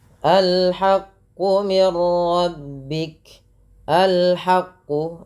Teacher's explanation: Al-haqqu, ya perlu kita pahami kalau yang seperti ini dibaca a ya di awalnya, dan di sini ada alif lam qamariyah dibaca dengan jelas suara lamnya